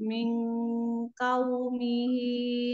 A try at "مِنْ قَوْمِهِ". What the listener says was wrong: Kofnya tadi bunda ya kurang ke belakang.